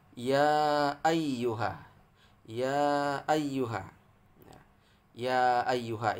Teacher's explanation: terpisah terdiri dari dua kata maka disebut dengan Mad Jaiz munfasil panjangnya 2 sampai 6 harokat tapi kita ya bacanya 6